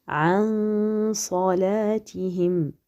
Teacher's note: le noun est caché ou dissimulé derrière le sad. On vient avec le nasillement